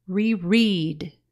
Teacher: For example, in cancel, the first syllable is accented, cancel. In the word reread, the accent is more on the second syllable